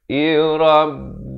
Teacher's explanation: Sempurna saja izhar syafawi. Kum jangan panjang.